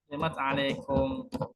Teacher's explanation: Ta dengan ain. Ta makhrajnya ujung lidah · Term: izhar